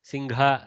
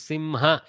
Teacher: used to using a little gakara there for hakara i would say that's ok it's a local variation